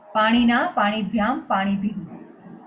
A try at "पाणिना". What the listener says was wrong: There will be panina, not panina, not murdhanya nakar. दन्त्य नकार, not murdhanya. अपना मराठी वाला पानी आप ले रहे हो, है ना?